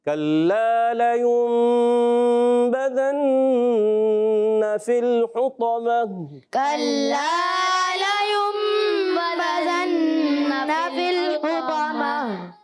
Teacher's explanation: یہاں دو غنے ہیں، اقلاب کا اور نون مشدد کا. دونوں غنے ہم نے کرنے ہیں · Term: نون مشدد کا غنہ